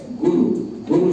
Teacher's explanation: वो दोनों में ह्रस्व है, ग में भी ह्रस्व छोटा है और र में भी छोटा हुआ